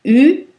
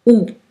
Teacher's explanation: U est une voyelle antérieure et OU est la même voyelle, sauf que la langue a bougé plus vers derrière. C'est une voyelle postérieure.